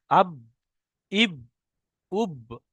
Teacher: 16 নম্বর মাখরাজ বা। বা, দুই ঠোঁটের ভিজে অংশ হতে উচ্চারিত হয় বা